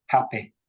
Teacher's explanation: where a word ends with an E sound like happy, it becomes I, happy. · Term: happy vowel